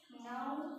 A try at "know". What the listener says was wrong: Kedua ini bukan kni, tapi ni aja. Ada namanya K itu namanya silent. Kamu silent letter namanya. Silent letter.